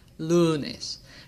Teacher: or n which means that lunes is a Jana word and the emphasis is on the second to last syllable